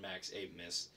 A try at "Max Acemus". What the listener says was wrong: Acemus. Ace. There's no, the B is silent and it's like a C. Max Acemus.